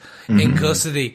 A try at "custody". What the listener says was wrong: No, saying custardy.